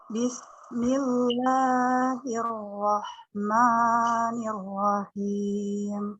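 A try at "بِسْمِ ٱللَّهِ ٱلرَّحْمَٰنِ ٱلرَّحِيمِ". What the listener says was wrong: Oke, ma-nya jangan terlalu panjang Bu. Kalau bisa sih dengan ini Bu. Bismillahi. Rahmani.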